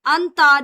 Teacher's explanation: نون ساکن کے بعد تا ہے تو اخفا ہوگا